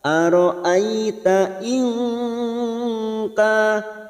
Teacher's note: nun sukun bertemu kaf ikhfa hakiki kita samarkan 3 harokat atau 2